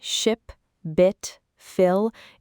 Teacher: The short I sound as in ship, bit, fill, is made with a relaxed mouth and a short quick vowel.